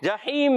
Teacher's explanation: جیم کا مخرج وسط زبان، وسط تالو، زبان کا درمیان، اوپر تالو کا درمیان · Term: حروف شجریہ